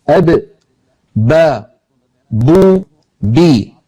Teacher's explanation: با دونوں ہونٹوں سے ادا ہوتی ہے، اس طرح کہ دونوں ہونٹ آپس میں ملتے ہیں۔ زبان کو دیکھیں، جب با ادا ہوتی ہے تو زبان بالکل سکون میں ہوتی ہے۔